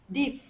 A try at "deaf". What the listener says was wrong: This one here is irregular. It's actually pronounced deaf, instead of deef. Yeah, deaf.